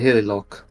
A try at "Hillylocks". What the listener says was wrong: Hilly Locks. It has an S at the end.